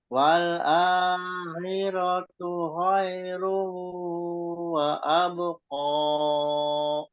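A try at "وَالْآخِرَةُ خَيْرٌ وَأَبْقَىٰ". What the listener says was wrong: Disempurnakan kho-nya ya. Kho-nya masih belum masih samar. Sekali lagi, A-nya itu ada matobi'i dipanjangkan wal akhiratu khairu wa abqa. Ro-nya, ro-nya nggak panjang. Ro-nya ya ro yang pertama juga nggak panjang. Wal akhiratu khairu wa abqa. Jadi tadi itu alifnya, hamzahnya dihilang, ada sebagian hilang.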